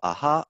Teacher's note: In between, what happens is that the vocal folds need to start spreading more to go from ah to an H. And so we end up with this kind of in-between stage of breathy voicing, where the glottis is opening more than usual